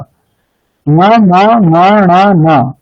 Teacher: হ্যাঁ বর্ণ অনুনাসিক হয়। হ্যাঁ, বর্গের যে পঞ্চম বর্ণগুলো আছে তাদের বর্গীয় যে উচ্চারণ স্থান আছে সেগুলো তো আছেই, আর নাসিকাও তাদের সাথে উচ্চারণ। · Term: অনুনাসিক বর্ণ